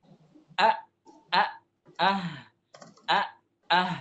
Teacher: Aqsa itu artinya paling jauh nah keluar makhraj Hamzah dan huruf ha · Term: aqsal halq